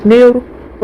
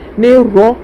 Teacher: نر میں حروف شمسی کا قاعدہ ہوگا، الف لام کے بعد حروف شمسی میں سے رو ہے تو الف لام کو نہ پڑھ کے نون کو رو سے ملا کے پڑھیں گے نیر۔ رائے مشددہ کے اوپر زبر ہے، رائے مشددہ پر ہوگی، نیر رو۔